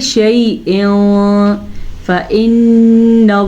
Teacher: नून का गुन्ना अदा करना है क्योंकि नून के ऊपर शद है। लफ्ज़ अल्लाह को पुर पढ़ना है क्योंकि लफ्ज़ अल्लाह से पीछे ज़बर है।